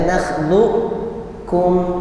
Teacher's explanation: Dibaca nakhluqkum, tetap ada sifat qalqalahnya di qaf dan masuk ke kaf. Maka disebut idgham naqis, kurang karena tidak sempurna ke kaf, masih ada huruf qaf.